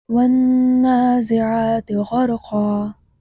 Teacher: یہاں والنازعات میں نون مشدد ہے جس میں غنہ ہوگا